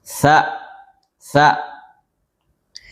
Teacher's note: huruf tsa makhrajnya keluar dari ujung lisan bersentuhan dengan pangkal atau ujung dua gigi seri. Ah, jangan ujungnya dikeluarkan ya, lisannya dikeluarkan.